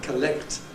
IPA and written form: kəˈlekt (collect)